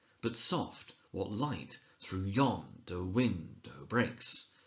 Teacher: we find ourselves unthinkingly emphasizing every second syllable, every second beat. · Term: iambic pentameter